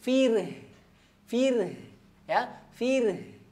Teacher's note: Kemudian di akhir ada ha pangkal tenggorokan, fir. Ya, ha-nya juga tipis, ha pangkal tenggorokan tipis, tapi dia di pangkal tenggorokan dalam, ya, dia lebih dalam, jadi butuh usaha sedikit.